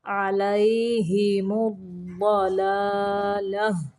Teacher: یہ جو گول تا ہے اس کو وقف کی صورت میں ہاں پڑھنا ہے